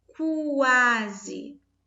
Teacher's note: ao pronunciarmos esse quase, o som do U, ele está sendo pronunciado.